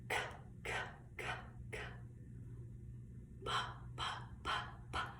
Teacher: with a p sound, we have no voice there. You can feel no vibration.